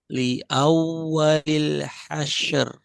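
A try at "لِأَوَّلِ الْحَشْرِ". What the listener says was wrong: Masih kurang tebal. Ser, ser. Itu tipis. Ser, syaro, syaro. Hasyaru, hasyaru. Li awwalil hasyaru. Ro di sini kan, roknya sukun, sebelumnya fathah.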